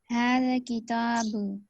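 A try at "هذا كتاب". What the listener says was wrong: آپ آخر میں کنفیوز ہیں. کتابو نہیں، کتاب. ھذا کتاب. ذا کو تھوڑا سا لمبا کریں. ھذا ذا. کتاب.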